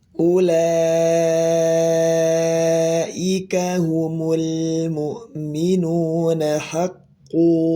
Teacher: Mad iwad ya. Mad iwad di sini dua harakat aja ya